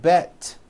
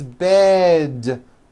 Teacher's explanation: It's not bet with an unvoiced T. It's bed with a voiced D.